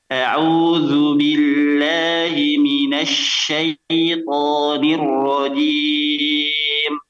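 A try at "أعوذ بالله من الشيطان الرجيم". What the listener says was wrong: Coba afwan, syaitan ya. Syai-nya, shin-nya disempurnakan dulu fathahnya ya. Jangan terlalu buru-buru syai ya. Jangan terlalu buru-buru ke ya-nya ya. Tapi syaitani, sya-nya jelaskan dulu.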